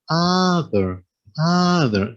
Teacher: a short u a relative vowel short you uh uh right with the tongue flat and uh flat on the floor and the aperture of the mouth is a symmetrical oval